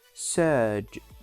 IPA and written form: sɜːʤ (surge)